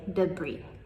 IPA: dəˈbriː